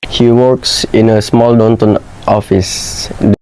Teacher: The speaker used insertion, which we can see that the speaker insert the sound r and pronouncing it, and it is obvious to hear the r sound. He inserted the sound r and pronounced the word work.